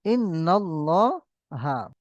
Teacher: খাড়া জবরটাকে আলিম মাদ্দার সমান এক আলিফ পরিমাণ টান দিয়ে পড়তে হবে।